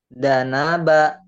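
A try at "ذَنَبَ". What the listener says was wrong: Za. Agak rapuh dikit. Lidahnya kayak digigit. Zanaba.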